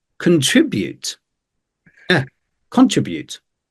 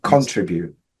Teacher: for me contribute the stress is on tree